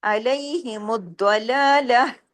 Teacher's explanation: آخر میں ہاں کی آواز آئے، سینے کی طرف جائے آواز